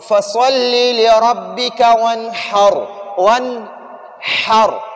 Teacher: نون کو ظاہر کر دیا اور را کو پر پڑھ دیا